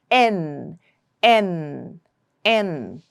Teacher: So N again is nasal that means the air comes out through your nasal passage and it's alvular that means your tongue will touch the alvolar ridge for this sound. So it is n. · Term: alvolar and nasal, alveolar and nasal